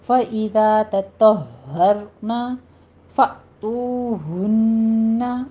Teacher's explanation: فا میں حمزہ پر جھٹکا دیں گے. تو میں واو مدہ ہے، اس کو کھینچنا ہے، ہونٹوں کو گول کرتے ہوئے 2 کاؤنٹ کرنا ہے.